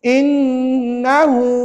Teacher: Mesti bunyi sengau dua kiraan dia. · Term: Wajib dengung dua harakat